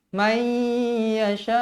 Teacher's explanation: hukumnya idgham ma'al gunnah, wajib dibaca dengung dua harakat. Mai, jangan baca man yasha, man salah.